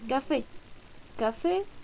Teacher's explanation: todas estas palabras tienen acento en la última sílaba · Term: agudas